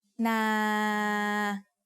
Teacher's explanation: As long as I don't run out of breath, the sound goes on forever, so it is a live ending.